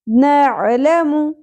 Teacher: لام اور میم ان دونوں پر زبر اور پیش سنگل حرکات ہیں, زیادہ نہیں کھینچی جائیں گی